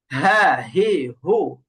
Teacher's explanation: তো হা নরম হরফ আর হা এর আরেকটা সিফাত হচ্ছে হা উচ্চারণ করার সময় বাতাস চালু থাকবে।